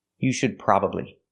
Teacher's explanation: We hear the D in should is a stop D. Not you should, but you should. Put the tongue up and stop the air, and link to the next sound.